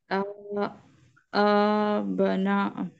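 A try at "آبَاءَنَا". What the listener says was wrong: यहाँ पे मद है, तो इसको चार पांच हरकत होगी, ये दो हरकत, ये चार पांच हरकत।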